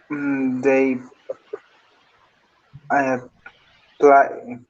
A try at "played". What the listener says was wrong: Played, Ok, sería played con D en pasado. Played.